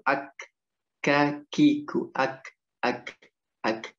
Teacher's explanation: perbatasan antara langit-langit yang keras dan yang lunak, itu huruf kaf di situ.